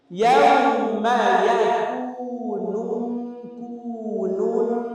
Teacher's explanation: দুই পেশের জন্য আলাদা আলাদা ঠোঁট বলতে হবে গোল করতে হবে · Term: ঠোঁট গোল